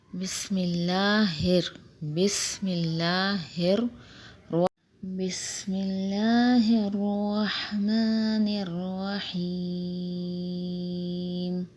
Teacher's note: بسم اللہ سین میں سیٹی آئے گی، اور لفظ اللہ سے پہلے زیر ہے تو لفظ اللہ کو باریک پڑھیں گے۔